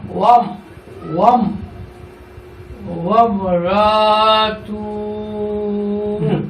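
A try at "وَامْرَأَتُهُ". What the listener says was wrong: এখানে আলিফ আছে না আলিফের উপরে জবর আছে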